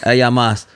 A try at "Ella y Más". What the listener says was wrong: Ella y más. Yeah, you're saying ella so perfect. But you're forgetting that word. Ella y más.